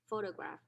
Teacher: the initial syllable is stressed